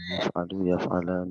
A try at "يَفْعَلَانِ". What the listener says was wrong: ইয়াফআলানি নে নে পড়বেন না উর্দুর ক্ষেত্রে নে পড়বেন আরবির ক্ষেত্রে নে না জন্য আপনারা আরবিকে বা আরবি স্টাইলে পড়ার চেষ্টা করবেন আমাদের কাছে এই ছোট ভুলটাও একটু বড় ভুল শিক্ষার ক্ষেত্রে ছোট ভুলটাও আমরা বড় করে দেখি যাতে আমাদের পরবর্তীতে ছোট ভুলগুলো না হয় ঠিক আছে না ইয়াফআলু ইয়াফআলানি ইয়াফআলুনা يفعلوا يفعلان يفعلوا يفعلان يفعلون يفعلوا يفعلان يفعلون